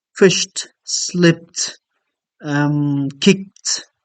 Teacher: one of the realizations of Ed is another realization is in the form of te when it follows the voiceless phonemes